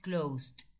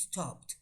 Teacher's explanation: por ejemplo, con closed es con d, con stopped es con t.